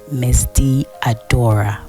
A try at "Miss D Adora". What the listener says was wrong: Wait. why you keep saying the D? I don't understand. Why are you emphasizing on the D?